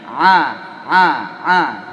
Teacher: Ain di tengah tenggorokan.